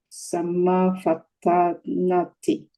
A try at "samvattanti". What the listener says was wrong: Samvattanti. It's not the samma. It's samvattan.